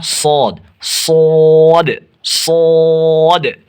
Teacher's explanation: زبان کی نوک اور ثنایا سفلا کا کنارہ اور کچھ اتصال ثنایا علیہ سے